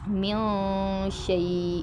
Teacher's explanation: من شیء، ادھر نون پہ اخفا کریں گے۔